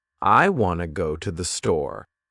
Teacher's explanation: Notice how wanna and store are stronger, and the other words are softer. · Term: sentence stress